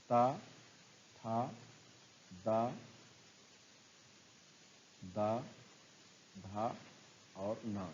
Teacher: तावर्ग का उच्चारण स्थान दंत होता है, तो था का भी उच्चारण स्थान दंत होगा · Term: दंत वर्ण